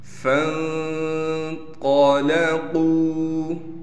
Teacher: فا کو نون سے ملائیں گے غنہ کے ساتھ، قا کو موٹا کر کے پڑھنا ہے بغیر کھینچے، قاف کو واو سے ملائیں گے اس لیے کہ واو ساکن ہے اور قاف کو ایک الف کی مقدار کھینچنا ہے۔